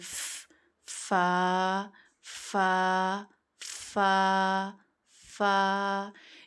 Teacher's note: ऊपर वाले दो दांतों के सिरे या किनारे और निचले होठ के अंदरूनी हिस्से के मिलने से फ अदा होता है। फ अब जो आपके ऊपर के दांत है ना सामने के दो दांत। · اوپر والے 2 دانتوں کے سرے یا کنارے اور نچلے ہونٹ کے اندرونی حصے کے ملنے سے فا ادا ہوتا ہے